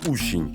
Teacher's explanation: в татарском нет русского звука о поэтому на его место обычно приходит звук у